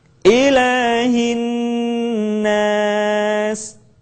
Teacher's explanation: Jangan lupa ilah tidak boleh kepanjangan, cukup diayun.